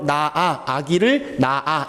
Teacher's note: 히읗이 탈락한 거라고 보시면 돼요. 발음상 탈락할 때 히읗 없어지는 거예요. 나아, 아기를 나아, 이런 식으로.